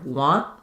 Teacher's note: And by linking a final T to another T, what's going to happen there is I'm going to make an unreleased T here. Want, I'm going to stop the air as though the T is happening, so the end will be quite short.